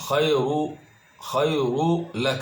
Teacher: khayru lak tanwiinta la idqaamiyo waxa lagu idqaamiyo laamka ka dambeeya